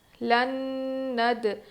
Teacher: لکھنے کا طریقہ، لام نون زبر لن، نون دال زبر ند، لن ند۔ یہاں پر نون پر تشدید ہے، غنہ کر کے پڑھیں گے، دال پر ہم قلقلہ کریں گے، لن ند، عین پیش عو، واو الف زبر وا، لن ندعوا۔